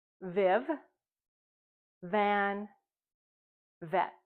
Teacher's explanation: When you read the book, Go, Viv, Go, you will have a chance to see the letter V, and your mouth will say V when you see the letter V. Remember, our top teeth rest gently on our bottom lip. We know that the sound continues and it's voiced. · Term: consonant V